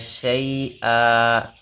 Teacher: یا مد ایک الف کے برابر لمبا ہوگا